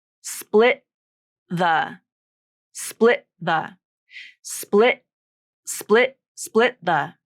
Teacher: I'm making that T with my vocal cords as they close. Now the tongue tip might come up, maybe between split the. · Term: stop T